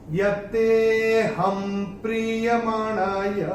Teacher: ह के ऊपर जो अनुस्वार आ रहा है उसके बाद का अक्षर है प, और अनुस्वार के बाद जब प आएगा तो अनुस्वार का उच्चारण होगा म · तीसरे चरण में ये जो एस आपको दिख रहा है, अवग्रह जो आ रहा है, वहां पे विलुप्त अ है, तो ये अवग्रह में हम इसको थोड़ा सा खींच के बोलेंगे ते को। यत्तेऽहं प्रीयमाणाय, ये ऐसे करके बोलेंगे।